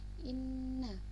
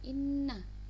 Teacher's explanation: Inna itu bacaan gunnah musyaddadah ya. Jadi dia dibacanya ditahan. Inna. Jadi seranya didengungkan inna.